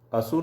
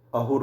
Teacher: पश्चिमोत्तर भारत की तरह ईरान में भी स का परिवर्तन ह में मिलता है। वहाँ असुर शब्द को अहुर बोला जाता है।